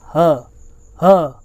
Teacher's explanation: ठीक है, काकल्य मतलब क्या होता है, ठीक है, ऐसे वर्ड जिनको बोलते समय उच्चारण करते समय क्या हो, हमारा कंठ झटके से खुले और वायु बाहर आए, जैसे ह, इसलिए इसको क्या बोलते हैं, काकल्य ध्वनि बोलते हैं। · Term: काकल ध्वनि